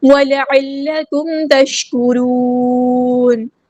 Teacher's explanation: میم ساکن پہ اظہار شفوی اور ٹائم نہیں دینا. تشکرون، تش نہیں کرنا، شین ساکن کو ہلا نہیں ہے.